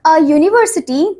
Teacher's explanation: the U in university is pronounced as Y-O-O, a consonant sound